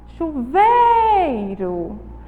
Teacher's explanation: a palavra tem a penúltima sílaba mais forte chuveiro Então ela é uma palavra paroxítona é a penúltima sílaba · é uma palavra paroxítona é a penúltima sílaba tônica certo então ela termina com a vogal Ó mas ela tem o som da vogal u